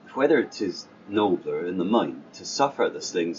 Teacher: the rhotic nature of the R